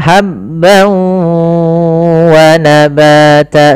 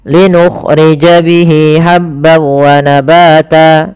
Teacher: Linukhrija bihi habban wa, ha kecil, hati-hati jangan sampai dibaca habbau, tapi habban wa, tanwin bertemu waw sebagaimana yang tadi, yaitu idgham bi gunnah. Langkah pertama masukkan tanwinnya ke waw, hilang suara nunnya menjadi suara waw, kemudian ditahan gunnahnya. Maka habban wa nabata sepanjang 2 harakat lebih sedikit.